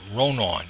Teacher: The R is broad. I'm saying ra instead of a tight r. The N is broad.